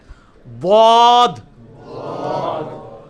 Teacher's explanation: ضاد کا آسان ترین طریقہ مخرج کا یہ ہے کہ یہ زبان ہے نا جی، آپ زبان کی جو دائیں یا بائیں کروٹ، کوئی ایک کروٹ، اس کو اوپر کے دانتوں کی جڑ میں لگانا ہے